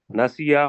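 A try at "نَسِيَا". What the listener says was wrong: Doctor صاحب معذرت کے ساتھ یہ جو نسیہ تھوڑا سا لمبا کریں گے تو پھر تسنیہ واضح ہوگا.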